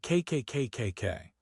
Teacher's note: Put your hand on your throat. Say KK KKK. No vibration. It is unvoiced. Because K is unvoiced, the E D must also be unvoiced.